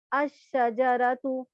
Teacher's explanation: تو اب اگر حروف شمسی میں اس کو کامن کو پراپر بنانے کے لیے ال داخل کریں گے تو الف کو شین سے ملا کے پڑھیں گے اور شین پہ تشدید آ جائے گی، الشجرتو پڑھیں گے ہم، ایک تنوین ایک تو پیش کم ہو جائے گا اور لام نہیں پڑھا جائے گا.